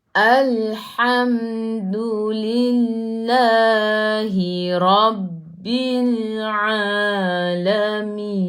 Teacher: Matikan dengan huruf nun. Hujung lidah menyentuh langit keras di bahagian depan.